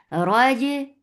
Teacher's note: jim is a mashhura letter, so should not escape any sound or breath